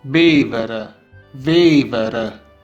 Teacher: In Neapolitan, the V sound is often replaced with the B sound and vice versa. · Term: Replacement of the V sound